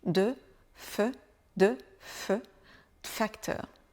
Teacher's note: de facteur, et là ça devient un peu difficile à prononcer parce que le D et le F se prononcent au même endroit dans la bouche.